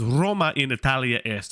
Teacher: we're deducing that something happens to the last A of Italia. The vowel elongates